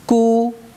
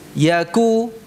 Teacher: perhatikan pengucapan kafnya ya mencucu karena harakatnya dhammah dan tipis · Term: kafnya tipis